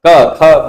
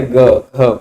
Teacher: और नाद, नाद क्या होता है कि श्वास नहीं होती, श्वास का अभाव होता, सीधे नाद ही सुनाई पड़ती है। और घोष होता है, गूंज होती है